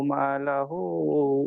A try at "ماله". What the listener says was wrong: মা লাহু নেই এখানে, এখানে মা লুহু আছে দেখেন। মালুহু